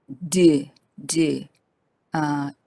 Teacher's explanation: located lower neck when you pronounce d d you will feel vibration of your vocal cord and they are called voiced consonants